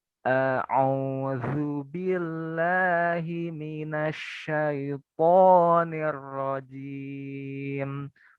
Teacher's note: Nah, selanjutnya huruf ain. Ain ini makharijul hurufnya di wasatul halki, di tengah tenggorokan.